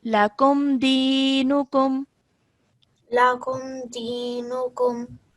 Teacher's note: you do not hold the sound of meme. Okay, so you simply say it and you carry on. Okay, and this is ya sakin, ya mad, so dinukum, like that. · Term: clear meme sakin sound